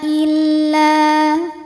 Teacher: sebab ada Alif yang didahului harakat fathah maka huruf lam kita panjangkan dua harakat saja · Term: Mad thobii ziri